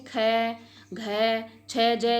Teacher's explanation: महाप्राण व्यंजन जिन वर्णों के उच्चारण में हकार ध्वनि सुनाई नहीं पड़ती, यानी कि श्वास की ध्वनि है सुनाई नहीं पड़ती, सुनाई पड़ती है, हकार की ध्वनि यानी कि श्वास की जो ध्वनि है वो थोड़ी हमें सुनाई पड़ती है